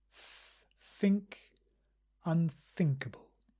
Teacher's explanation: we pronounce think with a th sound. So we gently put the tongue between the teeth.